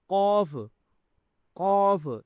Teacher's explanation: قوف کو موٹا کرنا ہے آپ نے، یہ بھی تفخیم میں آتا ہے، ٹھیک ہے، قوف، قوف، یہ دو نقطے والی جو قوف ہوتی ہے اس کو موٹا کرنا ہوتا ہے، یہ یاد رکھیں، ٹھیک ہے، دو نقطے والی جو قاف ہے اس کو موٹا کرنا ہے۔